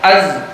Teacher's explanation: Misalkan antum baca az, tidak banyak udaranya. Tidak boleh ditiup. Ini salah nih, bercampur dengan huruf sin. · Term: jahar